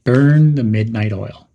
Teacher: Some pronunciation tips are to stress the words burn and midnight